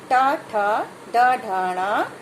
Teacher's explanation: ऊपर मुंह के ऊपर की छत है जो, उसको हमारी जो जीभ है वो टच करती है। तो ये उसको मूर्धा कहते हैं।